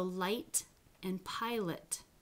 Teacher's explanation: the light or the clear l occurs word initial and word medial before a vowel